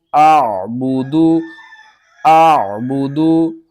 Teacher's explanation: حمزہ کو ہم نے عین کے ساتھ ملانا ہے اور عین کو آپ نے حلق کے درمیان والے حصے سے ادا کرنا ہے۔